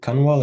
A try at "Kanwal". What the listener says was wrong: Oh, the N is silent. It's Kawad.